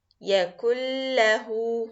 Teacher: this idgham for lam, it will be complete idgham with no gunna, which means that you are going to put the noon and the lam together and mix them completely, as you cannot make difference between the sound of the noon and the sound of the lam.